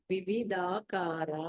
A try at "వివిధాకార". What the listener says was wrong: దా కాదు ధ, వివిధాకార వివిధాకార